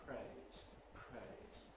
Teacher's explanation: That period of voicelessness, that puff of breath, happens during the consonant, during the R in the case of praise. So the effect is a voiceless R. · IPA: [pr̥eɪz]